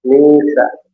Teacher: nun sukun bertemu sin, maka di ikhfa nun sukunnya disamarkan ke huruf sin. Ya, tempelkan ke makhraj sin di tengah lidah.